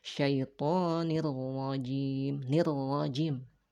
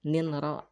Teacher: digabungkan tanwinnya ke dalam ro tanpa ada dengung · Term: idgham bila gunnah